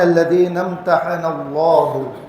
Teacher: یہاں پہ اللہ کے لام کو موٹا پڑھیں گے